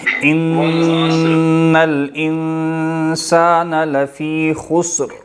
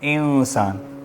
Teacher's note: انسان میں چونکہ اخفا ہے نا تو ناک میں آواز لے کے جائیں گے